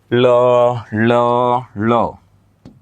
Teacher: এই ধ্বনি উচ্চারণে জিহ্বার দুই পার্শ্ব দিয়ে বাতাস বের হয়, জিহ্বার দুই পার্শ্ব দিয়ে বাতাস বের হয়, তাই এটাকে বলে পার্শ্বিক ধ্বনি।